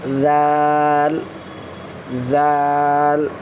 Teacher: اس کو پروناؤنس کرنے میں سافٹ ہونا چاہیے، اس کا جو مخارج ہے، زبان کا نقص ثناء سفلی کا کنارہ سے زال پروناؤنس ہوتا ہے۔ آپ اس کو سافٹ وائس میں اور ٹچ کرتے ہوئے فرنٹ جو ٹیتھ ہے، اپر ٹیتھ اور لوور ٹیتھ ہے، اس کو ٹچ کرنا ہے